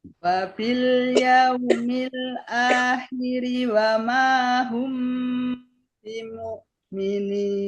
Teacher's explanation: Hati-hati akhiri wama. Harinya jangan panjang, Bu.